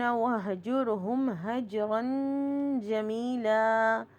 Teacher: جیم کے اوپر قلقلہ ہو رہا ہے اور جمیلہ میں دیکھیے یا ساکن سے پہلے زیر آ رہا ہے تو یا بالمد ہے.